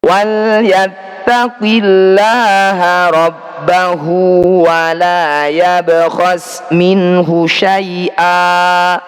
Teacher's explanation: Fathah tanwin jika dibaca waqaf ini disebut bacaan mad nyiwat. Cara bacanya bunyi fathah tanwin kita ganti fathah panjang.